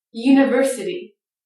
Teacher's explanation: that i t y ending is almost always itty with the light d sound